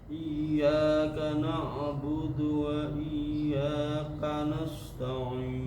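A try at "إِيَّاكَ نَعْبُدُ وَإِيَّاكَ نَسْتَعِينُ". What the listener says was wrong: Masih tebal Pak. Na juga na'budu. Na'budu. Iyyaka na'budu wa iyyaka nasta'in. Ketika baca agak tidak jelas dan tebal.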